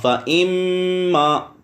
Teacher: آگے فَإِمَّا، فا زبر فا، حمزہ زیر میم ام، فَإِم میم زبر الف ما، فَإِمَّا پیچھے بتا دیا ہے. نون یا میم مشدد ہو تو غنہ ہوتا ہے، یہاں پہ غنہ ہو رہا ہے